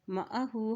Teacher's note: हा के ऊपर उल्टा पेश है, इसको एक हरकत लंबा अदा करें।